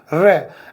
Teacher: जब रे का उच्चारण करते हैं तो हमारी जो जीभ है ना वो लोढ़े नुमा हो जाती है, मतलब ऐसे थोड़ी सी मुड़ के फिर आगे निकलती है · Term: लुंठित